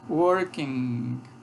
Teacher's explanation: essa consoante nasal velar é um fonema em inglês, que ocorre, por exemplo, com o gerúndio. Se diz assim, working, é uma consoante nasal velar.